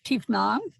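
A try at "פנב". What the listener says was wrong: There's no T. Fa nav. Look, fa nav.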